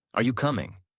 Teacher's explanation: Voice rises at the end. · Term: Natural tone